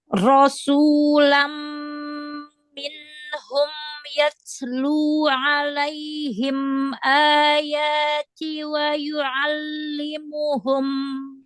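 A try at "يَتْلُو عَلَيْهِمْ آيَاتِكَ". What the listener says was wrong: K-nya hilang. Ayatika. K-nya hilang. jali menghilangkan huruf. Hati-hati. Nggak usah panjang-panjang, tapi sempurnakan makhorijul huruf dan sifatul hurufnya, tingkatan gunahnya. Nggak usah panjang-panjang.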